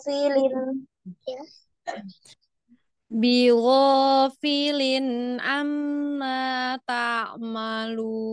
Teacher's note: Filin nya ini dialirkan. Diayun ya, karena panjangnya 2 harokat cukup diayun.